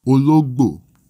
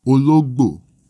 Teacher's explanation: It has a middle tone, then a high tone, then a low tone. Ologbo. The tones are phonemic, and changes in tone result in changes in meaning.